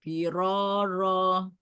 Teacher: jangan firoro, jangan dimajukan bibirnya. Ro dibuka.